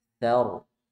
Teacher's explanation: ro sukun sebelumnya fathah, jadi baca tebal